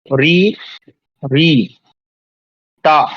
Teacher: ता बोलेंगे तो आपकी जीभ ऑटोमेटिक मूर्धा पे जाएगी।